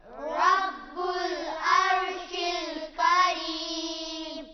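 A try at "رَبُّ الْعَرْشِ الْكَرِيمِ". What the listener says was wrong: अर्शिल यहाँ पर लाम जो है इसको हिलाना नहीं है। रब्बुल अर्शिल करीम। करीम। करीम।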